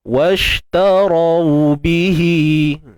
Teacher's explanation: Tebalkan ra, kemudian baru lembutkan waw ni, sifat lin kan, bacaan lin.